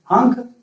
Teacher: अंक का उच्चारण तालु से करते हैं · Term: अनुस्वार